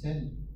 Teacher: Le son de qui s'est dévoisé, hein, c'est-à-dire qui a perdu la vibration des cordes vocales, qui a perdu sa voix, pour devenir ten en anglais par exemple, mais qui est resté de en français ou en latin.